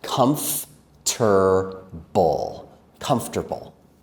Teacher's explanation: In my American accent, I say that with 3 syllables.